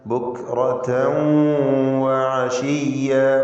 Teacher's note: റാഇന് തഫ്ഖീം കൊടുക്കണം. തൻവീനിന് ശേഷം വാവ് ഇദ്ഗാം ബിഗുന്ന.